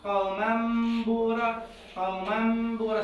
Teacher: أول مرة طبقت الشفتين مالتي على اليمين على حرف الميم، وباعدتهم وين؟ على حرف الباء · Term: الإخفاء